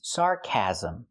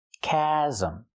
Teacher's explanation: She means sarcasm. We need a short ass sound like black cat for the second syllable.